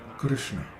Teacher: It's Krishna, Krishna, K-R-S-N-A, Krishna. And when pronouncing the R-S-N in the middle of Krishna, the tongue is held back and pressed against the inside of the lower teeth